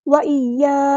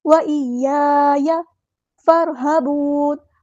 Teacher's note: یہاں پر یا کی زبر کو لمبا نہیں کرنا، حرکات کو لمبا نہیں کرتے